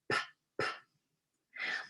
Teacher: Are you feeling that puff of air on your hand as you pronounce the words that start with P?